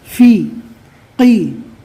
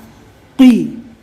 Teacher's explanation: قوف کو برابر اچھی طرح طاقت سے پڑھے، حلق میں تھوڑی طاقت دینا پڑے گا